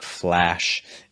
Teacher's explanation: you open your mouth wide and raising the middle of your tongue but the back and the front of your tongue should be down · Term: a sound